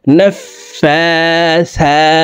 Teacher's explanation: ফার উপরে খারা জবর আছে তাই এই ফা হরফকে এক আলিফ টেনে পড়ব নফা সা খারা জবর সা সার উপরেও খারা জবর আছে তাই